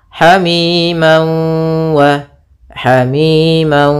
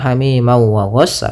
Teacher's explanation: ini namanya idgham bighhunah atau Idam maal ghunah cara membacanya yaitu masukkan tanwinnya ke wau sambil ditahan gunahnya dua harakat